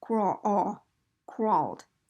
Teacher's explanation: it's an ah sound with rounded lips basically